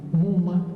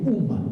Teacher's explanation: Ahora, este último cambio no es corriente, pero existe. Es que cuando una palabra comienza por una nasal, la M es una nasal, y luego le sigue otra nasal dentro de la palabra, puede desaparecer la primera